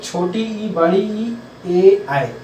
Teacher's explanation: अग्र स्वर जिसमें जीभ का अगला भाग कार्य करता है, जिसके उच्चारण में, वो अग्र स्वर कहलाते हैं।